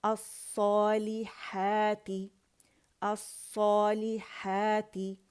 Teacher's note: لے اور تے نہیں پڑھیں گے، لام کسرہ لی اینڈ تا کسرہ تی